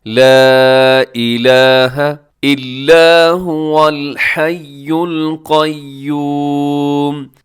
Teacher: یہاں پہ جو مد ہے اسے مد منفصل کہا جاتا ہے، مد جائز بھی کہا جاتا ہے۔ آپ اس کو 4 سیکنڈ تک لمبا کر سکتے ہیں۔